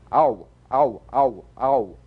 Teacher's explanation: Another diphthong, a combination of the largest lip opening, number five, ah, with the smallest, number one.